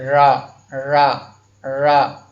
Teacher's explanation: देखिए दोस्तों, जब हम रा का उच्चारण करते हैं तो रा रा रा ऐसे आप 2-3 बार बोलेंगे तो उसमें आपको फील होगा कि आपकी जिह्वा मुड़ जा रही है, ऊपर की तरफ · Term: प्रकंपित व्यंजन